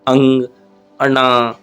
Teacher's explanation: जैसे अंग, मुझे ऐसा लगा ना जैसे जीभ ने गले को रोक दिया है और आवाज़ को ट्रांसफर कर दिया नाक के हिसाब से। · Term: नासिक